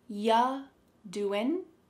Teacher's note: the word you is reduced to ya.